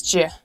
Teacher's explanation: try blending the words together so do you becomes ju